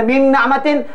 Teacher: bukan dengung luar, dengung dalam nun yang kedua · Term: idgham kamil